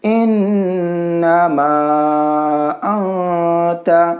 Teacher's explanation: یہاں پہ نون ساکن کو اخفا کریں گے